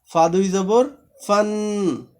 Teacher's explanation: দাঁতের আগা এই ঠোঁটের প্যাটের সাথে লাগায়।